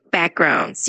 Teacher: when you say the word backgrounds, just make sure to emphasize the first part of it